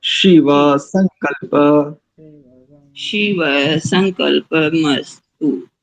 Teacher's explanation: शिव में तालव्य सकार है और संकल्प में दंत सकार है